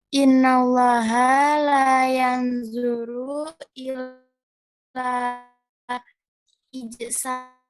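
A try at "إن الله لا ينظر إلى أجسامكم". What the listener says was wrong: Ini salah barisnya, banyak yang keliru jadinya ya. Pengaruh hamzah ya. Yang betulnya adalah hamzahnya di sini ya.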